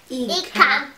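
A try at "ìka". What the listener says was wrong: Not Ika. Ika means wicked. You have to remember your accent. Ika. Ika. Dore. Remember your dore, your accent? Ika means wicked.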